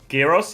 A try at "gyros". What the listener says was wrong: I don't think you say the G.